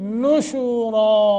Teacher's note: نشورا نون کے اوپر ضمہ ہے پیش ہے نشو نہیں نشورا را کو موٹا کریں گے اور الف پہ رکیں گے